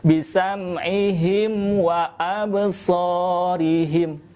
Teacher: huruf wawu itu satu makhraj dengan huruf mim, maka harus lebih jelas ketika menghadapi mim dengan wawu tanpa disertai dengan pantulan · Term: idhar syafawi